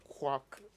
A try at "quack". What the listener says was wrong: you almost said quacks okay as i have said but it's actually quack